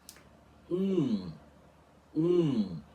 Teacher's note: nós fazemos o bico assim, u, e depois fechamos ele até ele ficar completamente cerrado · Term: o nasal do português